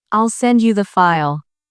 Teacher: in the phrase, I'll send you the file, the stress is on send and file. It sounds like, I'll send you the file.